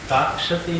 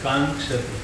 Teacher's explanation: અનુનાસિક અક્ષર છે એમાં કા પછી ઓલો ગકાર છે પછી ક્ષ છે ને પછી તી છે તો ઉચ્ચારણમાં અનુસ્વાર બોલાવવો જોઈએ